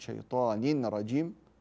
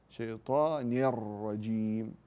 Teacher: فانا ادغم التنوين في الراء لا اقول شيطان رجيم وانما شيطان الرجيم من غير غنه لان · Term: ادغام بغير غنه